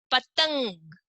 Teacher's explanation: न की आवाज आ रही है